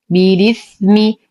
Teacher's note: نصبر على الثاء فهو حرف لثوي فيه رخاوة وهمس